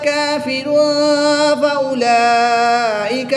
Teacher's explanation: تنوین کے بعد فا حرف اخفا میں سے ہے تو یہاں پر اخفا ہوگا یعنی غنہ زمانی کر کے پڑھیں گے